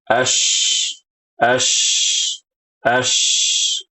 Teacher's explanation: Nah, inilah tafasyi ya, ibu-ibu rahimakumullah. Jadi, dia itu udaranya tuh banyak banget ketika kita baca huruf shin.